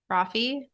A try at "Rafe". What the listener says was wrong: No, there's no E at the end. R-A-P-H.